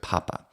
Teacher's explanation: We have an H sound which is added to it, papa. And if we don't do that, then we say papa, and we sound like we are a native Spanish speaker saying that word. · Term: aspirated